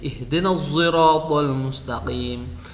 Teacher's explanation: Hurufnya shad tetap dibaca, sifatnya huruf shad tetap ada, tetapi huruf za-nya itu yang dibunyikan huruf za-nya. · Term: ismam shad bi sauti zai